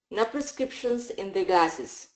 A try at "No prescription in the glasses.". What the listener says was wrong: No S. One more. In the glasses. In the glasses. More TH. In the glasses.